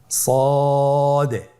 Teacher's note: জিহ্বার আগা সামনের নিচের দুই দাঁতের পেট ও আগার সঙ্গে লাগিয়ে উচ্চারণ করুন। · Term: সদ